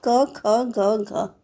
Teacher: क ख ग घ का उच्चारण स्थान क्या होता है कंठ होता है